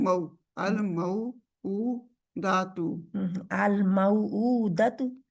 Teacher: मऊ के लिए पूरा होंठ गोल करने हैं